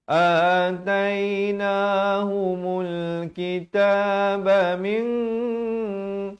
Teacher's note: di sini dibacakan dengan ikhfa hakiki dengan tebal dua harakat